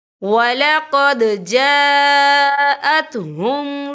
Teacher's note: دیکھیں وَلَقَدْ، دال ساکن ہے تو یہاں پہ کلکلا ہوگا، اور آگے دیکھیں جا، یہاں خالص سے پہلے زبر ہے اور اس پر مد بھی ہے. یہ مد جو ہے مد متصل ہے، اس کی مقدار 4 حرکت کے برابر ہے، تو ہم اسے 4 حرکت کے برابر کھینچ کے پڑھیں گے